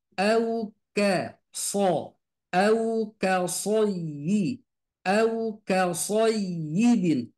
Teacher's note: huruf contohnya sod, harokatnya fathah, sebelumnya fathah. Maka sod ini tetap tebal.